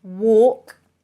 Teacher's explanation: the L is pretty much silent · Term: silent L